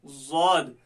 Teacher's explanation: जुबान की करवट और ऊपर के ढाड़ों की जड़, इससे ज़ौद निकला